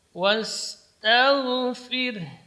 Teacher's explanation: Fir di sini ra-nya karena sebelumnya harakat kasrah maka dibaca tipis.